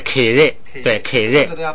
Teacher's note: 给日，就是低声，低往上升